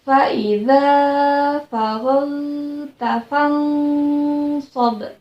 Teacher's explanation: ketika nun mati bertemu dengan so dibaca nun matinya samar-samar, tidak terlalu terdengar ya. Tetapi jangan terlalu dijelaskan, samar-samar saja ya.